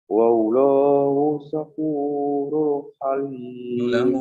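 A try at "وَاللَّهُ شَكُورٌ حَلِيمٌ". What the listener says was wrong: Wallah, lamnya dibaca panjang.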